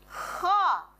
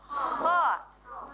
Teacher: Jadi pangkal lidahnya diangkat. · Kho itu termasuk huruf tenggorokan, tetapi dia juga termasuk di huruf isti'la. Maka pangkal lidah di atas ke langit-langit diangkat ya.